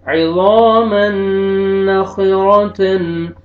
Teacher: یہاں پہ دیکھیں تنوین کے بعد حروف یرملون میں سے نون آ رہا ہے، یہاں پہ آپ نے ادغام کرنا ہے غنہ کے ساتھ